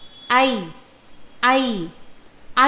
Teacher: ऐ ऐ ऐ वर्णस्य उच्चारणे अपि कण्ठतालुनोः सक्रियता अस्ति किल, अतः उच्यते ऐ वर्णस्य उच्चारणस्थानं कण्ठतालुनौ इति।